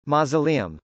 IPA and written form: mˌɔsəlˈiəm (mausoleum)